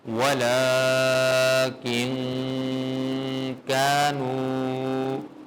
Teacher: نون کی ساؤنڈ میں پروڈیوس نہیں کر رہا، میں اس پہ غنہ کر رہا ہوں، اخفا کر رہا ہوں